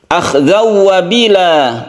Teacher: Akhzaw wabila, tanwin bertemu dengan waw kita sebut dengan idgham bigunnah, kita panjangkan